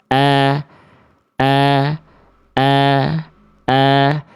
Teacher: Ketika vokal A-nya keluar, huruf tipis itu pangkal lidahnya turun. Tapi kalau huruf tebal, ketika momentum vokal A dari harakat fathahnya dibaca itu pangkal lidahnya naik sehingga bunyi vokal A-nya enggak murni lagi.